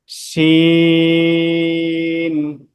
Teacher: শিনটা হলো জিমের মত করে জিহ্বার মাঝখানটা উপরের তালুর সাথে লাগবে